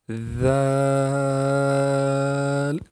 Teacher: آخر میں ہلکی سی لام کی آواز آئے گی